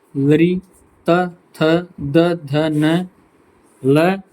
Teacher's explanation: दंत्य वर्ण है हमारे जो दांत पे स्पर्श होगा